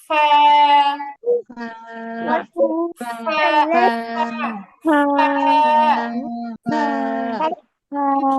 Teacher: নিচের ঠোঁটের পেট, নিচের ঠোঁটের পেট সামনে উপরের দুই দাঁতের আগার সাথে লাগিয়ে